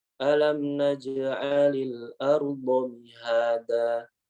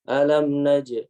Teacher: beliau mengatakan bahwa kolkolah itu suaranya condong kepada fathah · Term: qalqalah